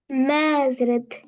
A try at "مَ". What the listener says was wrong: நீட்டக்கூடாது. மேயா மே, எது சரி? மே ம. which one correct? மீமுக்கு மேல இருக்கிறது பேர் என்ன?